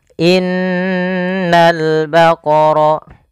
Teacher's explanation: Cara membacanya, menahan dulu suara n-nya sepanjang 2 harakat baru dilepas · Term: gunnah